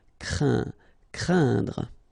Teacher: keep in mind that it goes in your nose, so you don't hear any N when I pronounce it, and then C plus R will produce the sound cr, crain, craindre. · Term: nasal